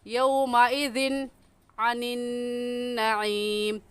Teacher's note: تنوین کے بعد حروف ہلکی میں سے عین آ گیا ہے، اس وجہ سے اس تنوین پر ہم غنّہ نہیں کریں گے